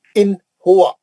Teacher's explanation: ہم نون کی آواز کو جلدی پڑھیں گے، کھینچیں گے نہیں، لمبا نہیں کریں گے، غنہ نہیں کریں گے، اور سیدھا سیدھا کلین پڑھیں گے، نون کو ایک دم صاف پڑھیں گے، جلدی پڑھ کے ختم کر دیں۔ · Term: اظہار حلقی